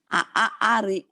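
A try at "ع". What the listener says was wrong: Ketekorokan sini Bu nih. Kayak keselak. Airi. Jangan ke hidung.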